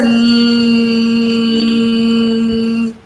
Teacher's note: You can feel the air escaping through the sides of the tongue